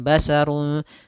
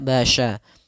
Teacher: Kemudian selanjutnya pada lafal basya, hati-hati dalam pelafalan sya-nya harus dibaca dengan shin bukan sin, bukan basarun tapi dia basya.